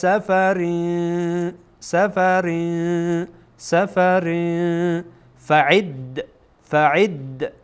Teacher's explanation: اکثرا عین از وسط حلق ادا میشه، از وسط حلق، از همان زبان کوچک.